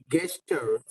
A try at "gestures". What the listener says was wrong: Gestures. I'm not sure you said that word right. It's not a hard G, it's a soft G. Gestures. So you can know that it's going to be a soft G by the letter that comes after it. If it's E or I, it will be J. If it's A, O, or U, it will be hard G, G.